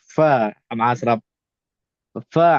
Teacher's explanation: sebut Fa pastikan gigi depan atas sentuh bibir mulut bawah sambil sambil nak sebut Fa tu lalukan angin ataupun bisikkan untuk sifat hams